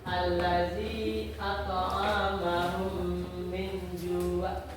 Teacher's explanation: Bacaannya memanjangkan mim mati tersebut sebanyak 2 harakat. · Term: idgham mimi